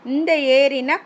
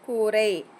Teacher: என்கிறோம் இது வந்து வல்லின எழுத்து ரா அதனால இதனை வல்லின ரகரம் என்கிறோம் நாவின் நுனி மேலண்ணத்தின் மைய பகுதியை உரசுவதால் ரகரம் தோன்றுகிறது